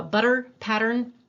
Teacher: most of us do a flap there